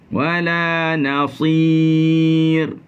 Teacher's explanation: Bila sampai pada ra, dia jadi nipis.